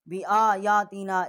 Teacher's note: یا کے اوپر 1 الف جتنا آواز بلند کی ہے